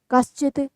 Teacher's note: दंते सकार की जगह पे तालव्य शकार बन जाएगा